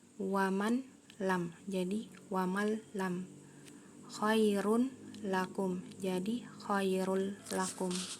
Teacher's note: nun atau tanwinnya hilang menjadi suara lam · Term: idgham bila gunah